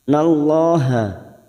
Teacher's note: lam jalalah kita baca tafkim karena sebelumnya ada fathah. Nallaha, la lam alif 2 harakat.